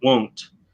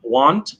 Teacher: with the the lips right um want and won't uh so with a won't you're you're pushing your lips forward more and want you're opening your lips up more